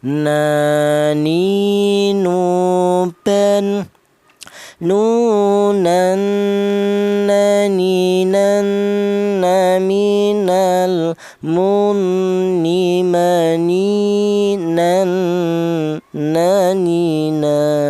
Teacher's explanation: Huruf nun keluarnya huruf berasal di ujung lidah menyentuh langit-langit mulut